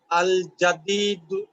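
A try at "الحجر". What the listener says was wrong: না, যা না, হা দিয়ে শুরু। আল হাজারু, হ্যাঁ। আল থাকলে তানভিন নাই।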